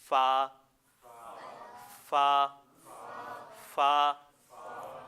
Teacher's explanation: یہ جو ہمیں نظر آ رہے ہیں نا جی، یہ ثنایا علیہ ہیں، اوپر والے دو دانت۔ ثنایا علیہ کے کنارے اور نچلے ہونٹ کے اندرونی حصے کے ملنے سے ادا ہوتا ہے۔